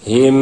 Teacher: দুইটা মিমকে একত্র করবে ইদগাম করে মিলাবে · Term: ইদগামে মিসলাইন